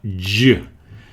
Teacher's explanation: It's related to the ch, as in chocolate and choco, but it's more voiced. It's down in your throat. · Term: j sound